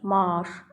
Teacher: qoşa A-larda kök daxilində A-dan biri düşüb, digəri uzanır.